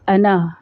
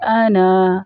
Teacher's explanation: اب اس کو کس طرح سے ادا کریں گے، یہ لفظ سورہ یوسف میں آتا ہے، جب ہم اس کو ملا کر پڑھیں گے تو انا، الف کو حذف کر دیں گے، الف کو نہیں پڑھا جائے گا، یعنی کہ نون کے ساتھ جو الف ہے اس کو نہیں پڑھیں گے، سمپل ایک حرکت ہی دیں گے، لمبا نہیں کریں گے